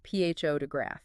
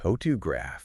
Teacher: if you were to stress the second syllable, photograph, it sounds almost unnatural